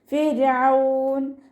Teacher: ഫിർഔൻ ഇവിടെ റോ താഴ്ത്തിയാണ് ഉച്ചരിക്കേണ്ടത്. റോക്ക് സുക്കൂനും മുന്നേ ഉള്ള അക്ഷരത്തിന് കിസ്റ.